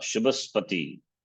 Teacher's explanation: Now when this word is preceded by another word, noun, as Shubhas of prosperity, then an accent will fall on Shu, the two words being considered as a single word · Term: Udata Swara